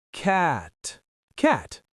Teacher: In American English, we say cat, but the T is very soft. It's almost like ca with a tiny T at the end.